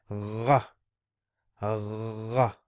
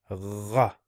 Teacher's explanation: Okay, so it's like saying ga, but ra from the throat, a bit of a phlegmy kind of sound